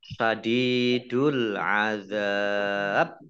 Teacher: Zal fathah alif mat tabi'i, tapi karena bertemu dengan huruf terakhir yang dibaca sukun karena waqaf, maka menjadi mat aris lis sukun. Dibaca panjang boleh 6 harokat, 4 harokat, atau 2 harokat.